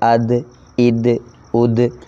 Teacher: دال اور طا پر آواز ہل رہی ہے، اد اد اد، زبان کی نوک تالو کے جو ہے وہ دو دانتوں کی جڑ میں لگنے کے بعد وہاں ٹکر کھا رہی ہے، ہلکی سی جنبش پیدا ہو رہی ہے ، معمولی سی حرکت پیدا ہو رہی ہے، اد اد اد۔